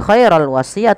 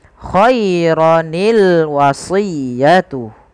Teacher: sukun yang pertama dikasrohkan sehingga berubah menjadi khaironi